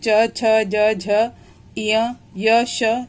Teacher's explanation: जब हम च, छ, ज, झ, य, श ये सब पढ़ते हैं तो जीवा जाकर तालु से स्पर्श करती है। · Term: तालव्य